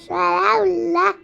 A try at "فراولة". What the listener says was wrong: فاء بالفاء. مش بالشين يلا، بالفاء. فاء. لا انت قلت بالشين.